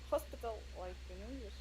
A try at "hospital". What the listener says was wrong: what did we say about the H?